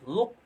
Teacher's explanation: Ketika bertemu dengan huruf qaf yang disukunkan, luq, maka itu harus seperti ada pantulan e-nya ya, luq. Nah, itu disebut dengan qalqalah subgro.